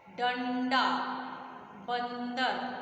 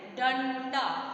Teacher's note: अनुस्वार का उच्चारण नाक के द्वारा किया जाता है।